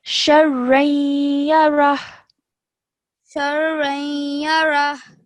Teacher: when I'm joining the sheen to the ra, because it's a ra mushaddad, I have to join the sheen to the ra with force